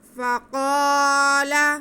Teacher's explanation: قاف حروف مستعلیہ میں سے ہے، اسے موٹا پڑھیں گے